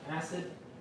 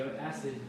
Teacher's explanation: Well, I usually say acid, and the D sound at the end kind of like blocks with the tongue kind of blocking it